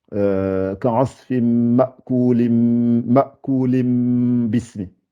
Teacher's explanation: Donc je remplace l'une des n là, le n que j'ai Ma'kulin, ma'kulim. Je ne dis pas le N, je le remplace par un M. Donc, ka'asfim ma'kulim bismi. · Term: iqlab